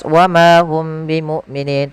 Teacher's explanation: Mim mati bertemu dengan huruf ba. Maka ini cara membacanya yaitu suara mimnya ditahan jangan langsung dilepas · suara mimnya ditahan, jangan langsung dilepas, wa ma hum bimu'minin, tapi tahan. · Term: ikhfa syafawi